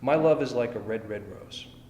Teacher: unstressed first syllable, stressed second syllable, it's iambic.